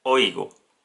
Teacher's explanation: El acento está en la vocal abierta O.